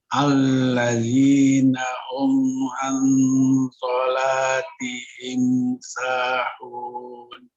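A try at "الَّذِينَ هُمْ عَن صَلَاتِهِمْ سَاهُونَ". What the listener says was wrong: Baik, barakallahu fiik. Lanjut.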